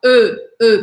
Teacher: Esse J, esse O barrado, na verdade, é o som do E em francês, que não existe em português, que é esse som intermediário entre um E, entre um O, né, um O fechado, e um E